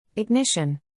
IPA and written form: ɪɡˈnɪʃ.ən (Ignition)